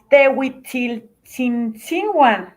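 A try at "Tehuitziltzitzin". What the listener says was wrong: Acuérdense que el primer tzi no lleva N. Es tzitzin. Hasta el segundo metes N. Tzitzin.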